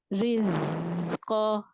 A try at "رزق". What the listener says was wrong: نہیں، یہ جو زا ہے اس میں اور اٹھانی ہے زبان. رزق.